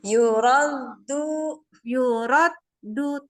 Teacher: jadi ujung lidahnya harus kena ke Pangkal gigi seri atas gak boleh ke langit-langit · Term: Dal